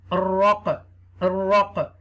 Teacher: Ra zabar ra will connect with the qaf sakina because the qaf has jazm sign over there. You will read with the echo sound.